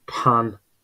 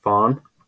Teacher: we have an aspirated p p becoming F uh so in pan becomes Fawn and this means a wooden